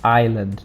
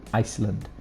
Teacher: we don't speak the s we say island not iceland